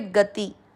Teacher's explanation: ग में अ मिक्स करते हुए गति, ती की मात्रा को खींचना नहीं है।